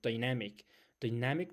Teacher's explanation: the stress in the second syllable